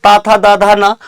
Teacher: ता वर्ग त था द धा ना कहां से बोला जाता है दांत दंत से बोला जाता है